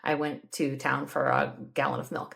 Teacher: from the Midwest I know it's hard to tell but uh in our region we tend to turn words like for into fur